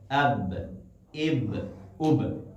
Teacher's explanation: با جو ہونٹوں کی تری ہے وہاں سے ادا ہوتا ہے